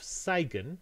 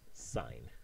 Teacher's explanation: where you delete the phoneme G, so G becomes zero, whenever you have G and then a consonant and then the edge of a word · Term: G deletion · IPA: [saɪn]